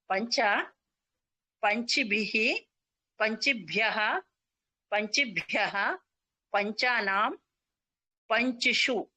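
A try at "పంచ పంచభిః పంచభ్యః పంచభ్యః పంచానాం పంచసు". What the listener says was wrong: ఇక్కడ మీరు పంచ అనేది అది చి అంటున్నారు, పంచిసు అంటున్నారు. పంచసు పంచభిః పంచభ్యః పంచ అన్ని మీరు ఈ పెట్టారు, అక్కడ పంచి అన్నారు.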